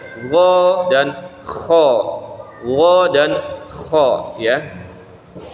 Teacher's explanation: Jadi ini makharijul huruf yang keempat ya, yaitu tenggorokan cuma di bagian atasnya gitu ya. Jadi dia di ujung tenggorokan ya, huruf ghain dan kha ya.